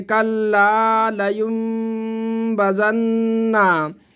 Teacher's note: گنہ کر کے پڑھیں گے، ناک میں آواز کو چھپائیں گے۔ نون مشدد ہے اس لیے ایک الف کے برابر گنہ کریں گے